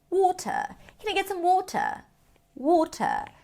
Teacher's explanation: the R is not pronounced in British English · In British English, the t is actually going to be closer to a regular tea.